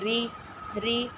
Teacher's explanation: کله په را د لاندې زیر وي نو بیا به مونږه باریک وایو